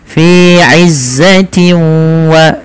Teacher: cara membacanya adalah masukkan nunnya atau suara bunyi nunnya ke huruf wau sehingga hilang suara nunnya · disertai dengan bacaan gunah yaitu memasukkan suaranya ke rongga hidung kita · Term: idgham bi gunnah